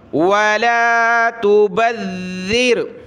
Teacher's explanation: با کو ذال کے ساتھ ملائیں گے ، ذال کو سخت تو کرنا ہے لیکن زبان نکالتے ہوئے